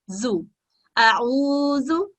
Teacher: अब जाल के पास, जाल के ऊपर दमा की हरकत है, और इसको हम 1 सेकंड का वक्त देंगे